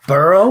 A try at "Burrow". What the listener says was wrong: if you're gonna say Burrows, at least say his name right. It's Burrow, not Burrows.